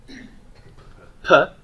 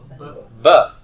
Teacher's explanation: do you see how P and B are labials? Your lips are coming together for that.